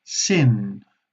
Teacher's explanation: la punta de la lengua toca la zona de las encías, arriba de los dientes, encima de los dientes